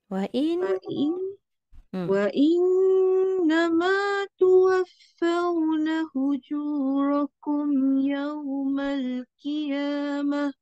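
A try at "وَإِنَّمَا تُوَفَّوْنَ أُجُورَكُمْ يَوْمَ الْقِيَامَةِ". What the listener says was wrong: Jaga eh. Bukan huju rakum. Uju. Hamzah. Sekali lagi.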